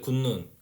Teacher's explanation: 근데 뒤에 비음을 만나서 디귿이 뭘로 바뀐 거야? 니은으로 바뀌잖아. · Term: 비음화